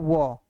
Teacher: दंत यानी दांत और ओष दोनों के योग से इसका उच्चारण होता है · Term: दंतु व्यंजन